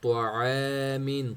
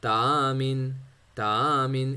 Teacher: طوا کو موٹا پڑھیں گے، عین کو مڈل تھروٹ سے پڑھیں گے